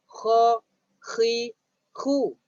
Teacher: Sebab huruf dia keluar dekat hujung halqum. Jadi hujung halqum kamu akan terasa.